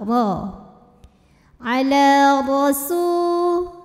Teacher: ra dibunyikan secara tafkhim karena ra-nya berbaris fathah, maka kita bunyikan dengan tebal